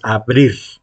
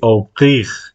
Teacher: El problema del francés es que La R no se pronuncia igual que en español. Se llama R uvular.